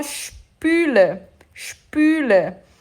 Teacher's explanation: esse S vai ter som de sh, igual o S do carioca. Sh.